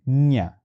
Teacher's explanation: we must position our tongue the same way as we position while pronunciating or producing the sound j and rather than saying j we end up saying nya